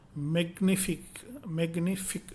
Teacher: The French consonant blend GN has the sound of ni, NI, like in English word onion, onion, onion.